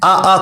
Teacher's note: आ कंठ से निकलते हैं